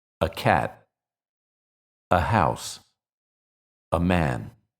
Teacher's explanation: it's normally unstressed and we pronounce it like a very short uh and we say it together with the noun that follows a